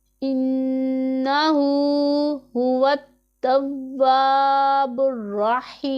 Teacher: نون مشدد ہے، اس میں غنہ ہوگا، اور غنہ کو ہم ایک الف کا اتنا لمبا کر کے پڑھیں گے ، ہا کو بھی ایک الف کا اتنا لمبا کریں گے،